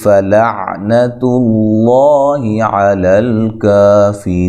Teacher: لفظ اللہ کے لام کو موٹا پڑھنا ہے